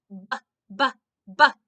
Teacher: When I make this sound, my lips touch, then open. I push some air out, and my tongue stays down. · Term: sound of B